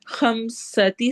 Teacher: سین میں سٹی والی آواز ہوگی